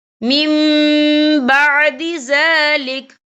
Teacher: یہ دیکھیں میم، یہاں نون ساکن ہے، نون ساکن کے بعد با آ رہا ہے، تو یہاں پر انقلاب ہوگا یعنی تبدیلی ہوگی، تو ہم یہاں میم کا تلفظ کریں گے، ہم پچھلے میم کو اگلے میم کے ساتھ ملا کر پڑھیں گے اور ہم یہاں غنہ بھی کریں گے